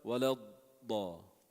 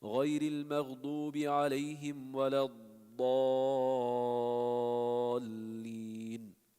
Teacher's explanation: Dad has a long makhraj. It's almost like the sound is going from the back of the teeth and to the front. So you spend a little time holding it. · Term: rakhawa